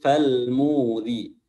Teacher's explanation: huruf ra di sini berharokat kasrah, makanya ia dibaca tarqiq atau tipis